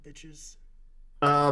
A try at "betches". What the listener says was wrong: Just like betches in general. says yeah, but with like kind of like she pronounces the I as an E, like and like kind of kind of like says like it with an accent kind of thing or like a yeah.